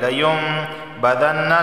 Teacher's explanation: لیمبذن، لیم میم کی آواز آئے گی. لیمبذن، نون پر تشدید ہے تو اس وجہ سے غنہ ہوگا